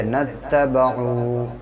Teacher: واو ساکن سے پہلے پیش ہے عین کے اوپر اس لیے واو مدہ ہوگا اور اس کو تھوڑا کھینچ کے پڑھیں گے